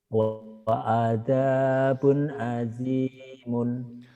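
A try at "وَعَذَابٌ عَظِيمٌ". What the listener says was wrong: Wa'adzabun azimun. Bacanya sudah benar. Cuma nadanya masih apa ya, Pak ya? Masih Masih datar.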